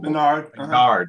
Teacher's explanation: They always put the accent on the second syllable.